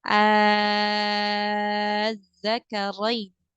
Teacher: cara membacanya itu dipanjangkan dulu madnya 6 harokat baru dimasukkan ke dalam tasydid